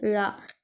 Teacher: நாவின் நுனி மேல்நோக்கி வளைந்து வருவதால் தோன்றும் எழுத்து ல இது சிறப்பு லகரம் எனவும் மகர லகரம் எனவும் அழைக்கப்படுகிறது ல ல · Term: சிறப்பு ழகரம்